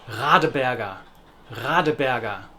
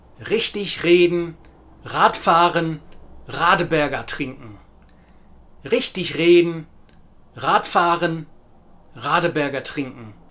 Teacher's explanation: The standard German R sound is a very unusual but a wonderful sound that does indeed come from a very similar place in the throat as the CH sound, the harsher sounding CH sound in lachen, machen and krach, somewhere here at the back.